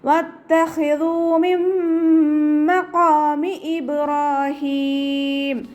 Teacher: നൂൻ സാക്കിനയ്ക്ക് ശേഷം ഇദാം ബിഗുന്നയുടെ അക്ഷരമായിട്ടുള്ള മീമാണ് വന്നിട്ടുള്ളത്. നൂൻ സാക്കിനയെ മീമിലേക്ക് ലയിപ്പിച്ച ഉന്നയോട് കൂടി ഒതി കൊടുക്കുക.